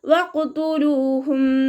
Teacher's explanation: വാവ് ഉച്ചരിക്കുന്ന സമയത്ത് ചുണ്ടുകളെ സർക്കിൾ ചെയ്തിട്ട് പിടിക്കുക. ഖാഫ് ഇസ്തിഅലാൻ്റെ ലെറ്ററാണ്, ഉയർത്തിയിട്ട് ഉച്ചരിക്കണം.